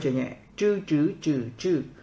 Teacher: zh cuộn lưỡi không bật hơi